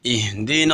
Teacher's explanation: اقصی حلق یعنی حلق کا وہ حصہ جو سینہ کے ساتھ ملا ہوا ہے، یہ حمزہ وہاں سے ادا ہوتا ہے